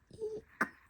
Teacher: So the difference between Y and E is that in the E, you kind of have the top of your tongue more back in your mouth